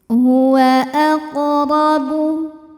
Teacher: Huruf ra dibunyikan secara tafkhim, sebab ra berbaris di atas yaitu baris fathah. Maka cara bacanya ditebalkan.